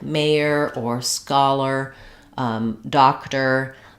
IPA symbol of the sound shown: ər